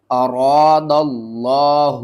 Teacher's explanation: لفظ اللہ سے پہلے زبر ہے، لفظ اللہ کو ہم نے موٹا کر کے پڑھنا ہے